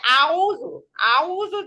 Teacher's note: গলার শেষ থেকে হামজা মাঝখান থেকে আইন